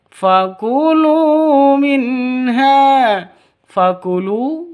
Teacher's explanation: lu panjang dua ketukan karena ada karena ada wawu mati diawali dengan dhammah. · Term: mad asli